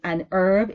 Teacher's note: because simply you say an herb in American English because herb in herb the H is not pronounced